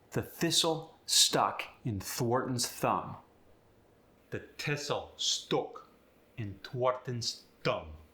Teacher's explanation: The voiceless TH gets the T sound.